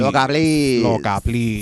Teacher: So a little bit of vocal fry going on.